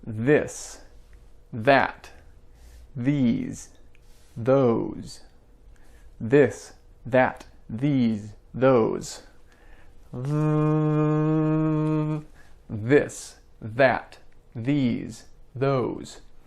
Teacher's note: it's all vibration the vibration occurs right between your tongue and your teeth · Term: voiced sound